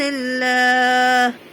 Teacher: لام پر کھڑا زبر ہے، اس لیے اس کو ایک الف کے برابر کھینچیں گے۔